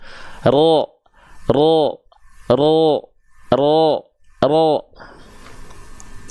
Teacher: vokal terdengar vokal o-nya tanpa monyong